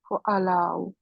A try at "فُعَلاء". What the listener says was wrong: فو. فو اللہ، فو اللہ. اس کو تھوڑا لمبا کرنا ہے کیونکہ اس کے آگے یہ بھی ہے نا. فو اللہ.